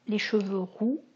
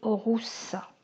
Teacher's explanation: Nous avons un, une, ce, cette, sont deux phonèmes, une syllabe ouverte au masculin et une syllabe fermée au féminin